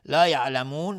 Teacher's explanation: مد عارض سکون به مقدار 2 یا 4 یا 6 حرکت میتونیم مد بدیم